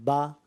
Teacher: زبر جب ادا ہوتا ہے نا تو منہ اور آواز کھول کر ادا ہوتا ہے